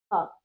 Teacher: इसका उच्चारण आधे ह की तरह होता है। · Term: विसर्ग